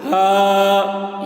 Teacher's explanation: یہ ہا کو کم کھینچیں گے کیونکہ یہ 2 حروف سے مل کر بنا ہے، ہا اور الف سے، اور اس کی آواز بھاری ہوتی ہے تھوڑی